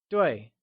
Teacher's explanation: 对 is pronounced using a falling tone